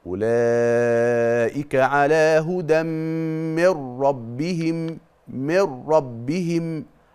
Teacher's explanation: حذفت النون من ربهم بقى عندك راء مشدده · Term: ادغام بغير غنه